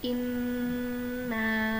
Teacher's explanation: Cara membacanya, nun ditekan dengan kuat dan ditahan selama 3 harokat. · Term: nun bertasydid